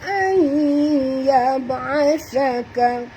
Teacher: nun mati bertemu ya, masuk dan dengung, idgham ma'al gunah